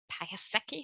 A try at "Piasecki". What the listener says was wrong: Well, nobody does say it correctly, but it was a good try. In Polish, the C is pronounced as an S, so it's Piasecki.